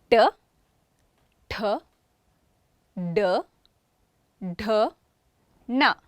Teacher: These are retroflex sounds. The tongue curls back.